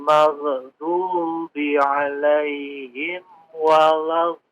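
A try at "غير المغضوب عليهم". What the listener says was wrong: Tadi huruf ghain ya, diperhatikan tidak dipantulkan Magh, maghdubi, biar mengalir begitu aja. Nggak usah dipantulkan ya. Ghairil maghdubi.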